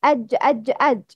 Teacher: It's emitted from the middle of the tongue and the middle of the mouth that lays opposite to it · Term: letter jim